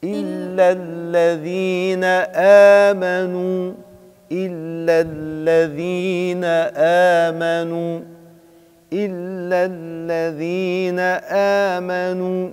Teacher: الهمزة مستفالة وليست مفخمة وليست من حروف التفخيم